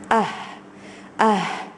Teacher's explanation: You see the way the sound is coming from the bottom of the throat. Ah, that's a makharij, that's the articulation.